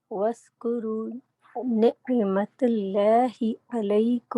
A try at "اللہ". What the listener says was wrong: یہاں پر لام موٹا ہوگا نا، اس کو آپ موٹا کرو.